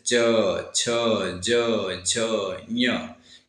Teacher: च वर्ग के उच्चारण में वायु कुछ घर्षण के साथ निकलती है। च वर्ग के उच्चारण में वायु कुछ घर्षण के साथ निकलती है, इसलिए इस वर्ग को हम लोग क्या कहते हैं, स्पर्श संघर्षी व्यंजन कहते हैं।